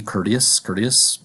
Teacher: in the word you might hear courteous but in American English American English likes to change the T sound into a d to economize on language make it easier to say